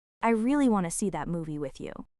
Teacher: The word to basically melts into thin air.